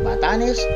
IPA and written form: bɐˈtanes (Batanes)